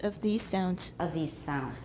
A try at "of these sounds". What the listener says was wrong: You're still making it higher.